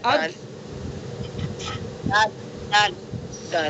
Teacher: زبان کی نوک ثناء کی جڑ پر آواز رک رہی ہے